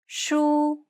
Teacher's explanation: it's pronounced high and steady and the pitch should be kept at the highest range that's comfortable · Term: high tone